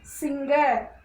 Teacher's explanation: When the letter R comes at the end of a word, that sound is not produced in these words.